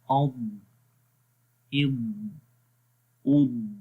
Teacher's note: زبان موو ہوگی، تھوڑی سی موو ہوگی، جس کی وجہ سے اس لیٹر کے اندر استطالت والی کوالٹی آ جاتی ہے، جو اس لیٹر کی صفت ہے جس سے یہاں پر زبان تھوڑی سی موو ہوگی.